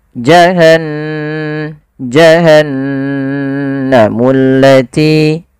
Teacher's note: ghunah ghunah yaitu membunyikan suara hingga masuk ke rongga hidung kita maka suara nunnya dimasukkan ke rongga hidung